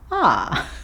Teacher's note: we don't tend to say the letter R at the end of 'are'.